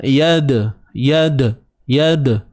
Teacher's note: huruf dal yang mati dalam keadaan kita sambung bacaan disebut sebagai qalqalah sughra, qalqalah yang kecil, lantunan yang kecil. Praktikalnya yad, yad'u, dia macam yada lah, tapi yada tu nampak benar kita buat-buat tuan-puan.